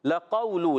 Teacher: لام پر زبر ہے، اس لام کی زبر کو نہیں کھینچیں گے۔ قاف واو زبر قو، واو ساکن سے پہلے زبر، واو لین، نرمی سے ادا کریں گے، مگر قاف کی ادائیگی، قاف زبان کی جڑ و تعلق نرم حصے سے ادا ہوتا ہے، یاد رکھنا ہے آپ کو۔